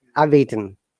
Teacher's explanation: next word starts with the same vowel of the same consonant it becomes merged that means it becomes only one so you have to pronounce together